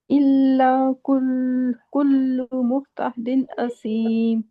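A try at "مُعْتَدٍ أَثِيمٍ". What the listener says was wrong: इसमें ना हा की आवाज आ रही, मुहतदिन नहीं, मुतदिन असीम। नहीं नहीं, झटका नहीं दे। इल्ला कुल्लू, रिलैक्स होके पढ़े। इल्ला कुल्लू। मुह नहीं, आइन है ये। मुतदिन, मुतदिन।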